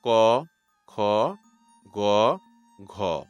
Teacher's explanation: তো আপনি যদি ক, খ, গ, ঘ বলার সময় আপনার হাতটা ভোগাল কর্ডের একটু উপরে রাখেন দেখবেন ক, খ বলার সময় সেটা ভাইব্রেট করছে না। কিন্তু গ, ঘার সময় করছে। খুব সাটেল একটা পার্থক্য।